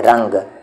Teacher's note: یہ نون غنہ ہے کیونکہ آواز اس کی صاف نہیں ہے